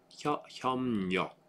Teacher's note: So this B sound becomes an M. 협력. Instead of 협력.